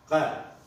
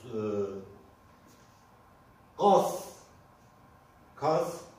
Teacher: Arapçada gaf gibi okunur. Tamamıyla boğazımızdan çıkarıyoruz bu sesi. Dilimizden değil, tamamıyla boğazımızdan çıkarıyoruz.